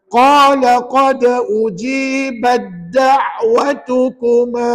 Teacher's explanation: pergi masukkan ta tu ke dalam dal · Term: Mutajanisan